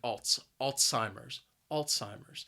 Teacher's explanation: talking about a disease that results in memory loss Alzheimer's now the word has three syllables and the stress is on that first syllable and I think that first syllable is what makes this word